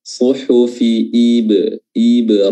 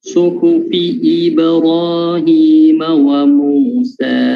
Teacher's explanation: I-nya juga di huruf hamzah ya, Ibrahim. I itu di bibirnya ditarik ke belakang sedikit, I biar kedengaran tipis. Suhufi Ibra, bukan Ibra.